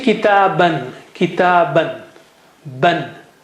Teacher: the alif after double fatha is not read